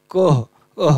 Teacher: विसर्ग का उच्चारण स्थान क्या होता है, कंठ होता है